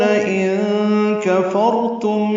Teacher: ان کفرتم میں نون ساکن کے بعد قاف آنے کی وجہ سے اخفا ہے